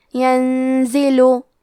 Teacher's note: نون ساکن ہے، پھر حرف زے ہے، زے حروف الاخفاء میں سے ہے تو ہم یہ حکم کو غنہ کے ساتھ ادا کریں گے۔